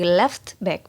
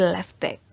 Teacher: Jadi untuk mempermudah itu kita harus menghilangkan huruf T-nya, jadi tidak dilafalkan meskipun di situ ada T-nya. Jadi dari left back menjadi left back.